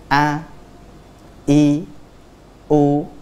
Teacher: Tenggorokan bagian bawah. Nah, kita keluarkan dari tenggorokan bagian bawah. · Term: huruf hamzah